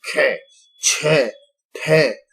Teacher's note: इन सब में बहुत ज्यादा जोर लगता है, इसलिए प्राण निकलते हैं, महाप्राण इनको बोलते हैं